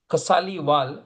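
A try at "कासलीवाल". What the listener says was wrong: Kasliwal. The KA should have the line not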